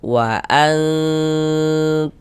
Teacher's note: Yang disamarkan itu bunyi nun sukun atau bunyi tanwinnya. Karena di sini yang kita temui nun sukun, maka bunyi nun sukun yang kita samarkan. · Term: ikhfa hakiki